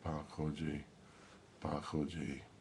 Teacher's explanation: trying to say it like a pea but without the puff of air